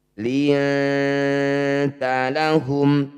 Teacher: Akrob itu dekat. Bunyi nun sukun dengungkan 2 harokat, ketika dengung lisan kita sudah bersiap di tak. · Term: ikhfa akrob